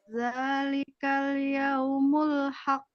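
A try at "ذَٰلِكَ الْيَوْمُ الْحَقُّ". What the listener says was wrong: Nah, gitu. Berikutnya.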